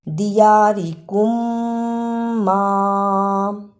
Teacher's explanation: میم ساکن کی آواز کو تھوڑی دیر منہ میں چھپا کر غنہ کرنا ہے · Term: ادغام شفوی